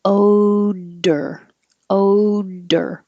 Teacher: when I say O, my tongue is flat and then it goes up for the D, odor, odor.